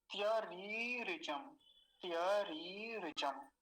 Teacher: पहली तो रेप पर दीर्घ इकार है, और फिर क्या है, रेप पर ह्रस्व इकार। इनका तो विशेष ध्यान रखना है।